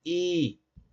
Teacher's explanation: Desde el punto de vista del grado de abertura del tracto bucal, la I completamente cerrada, es anterior al igual que la e en cuanto a su serie. Sabemos que todas las vocales son sonoras y la i al igual que la a y la e es no lavializada.